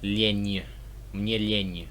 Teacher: So these letters do sound quite different when you put a soft sign after them. So the letter N will kind of become like a ny sound.